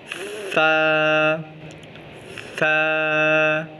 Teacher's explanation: जब सा की अदायगी की जाती है तो ज़बान ऊपर वाले दांतों से बाहर आती है, सा सा और हवा बाहर निकलती है। ध्यान रहे कि सा में सीन की आवाज़ या सिटी की आवाज़ ना निकले। सा नरम हरूफ है, इस पे ज़ोर नहीं लगाया जाता। · स सा को पढ़ते वक्त ज़ुबान ऊपर वाले दांतों के ऊपर लगती है और दोनों दांतों के दरमियान में ज़ुबान को निकाला जाता है। जब सा की अदायगी की जाती है तो ज़बान ऊपर वाले दांतों से बाहर आती है, सा सा और हवा बाहर निकलती है।